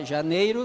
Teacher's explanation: Janeiro, o E e o I, ó, janeiro, tu tira o sonzinho do I, o som semivocálico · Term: supressão